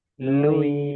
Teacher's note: Nah, lui ya antara nun dengan ya ya. Nah, jadi suaranya sebagian ke hidung, sebagian ke makrotnya huruf ya ya. Jangan wailuya. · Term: kaidah dengung